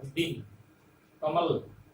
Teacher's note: अकारांत अंतिम वर्ण जो न है, अकारांत है, उसका उच्चारण हम आधे वर्ण जैसा करते हैं